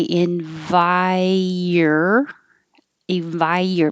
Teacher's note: make a y because your tongue is very high for the vi